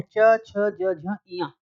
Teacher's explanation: चा वर्ग के जितने भी व्यंजन हैं, च, छ, ज, झ, इया, इनका उच्चारण स्थान कहां से होगा? तालु से।